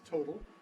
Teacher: The American one has a voiced T, the American one is total.